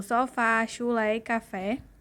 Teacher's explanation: o acento agudo que indica que a vogal tônica possui timbre aberto